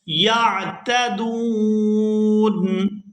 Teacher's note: یہاں پر وقف کریں گے تو وقف کی صورت میں نون جو ہے یہ ساکن ہو جائے گا